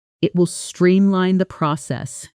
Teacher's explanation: It will streamline the process. Notice how streamline the almost merges into one smooth unit with the N and T sounds flowing together rather than staying sharply separated.